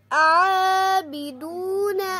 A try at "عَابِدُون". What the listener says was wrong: آ نہیں ہونا چاہیے، عابدون، عابدون، آ نہیں ہونا چاہیے، جیسے حمزہ کھڑا زبر آ نہیں ہونا چاہیے، عابدون.